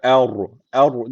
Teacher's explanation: ra harfini kalın okudum neden kalın okudum Çünkü ra harfi cezim aldığında ince kalın okunması